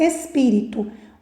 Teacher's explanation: o assento está na antepenúltima sílaba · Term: proparoxítona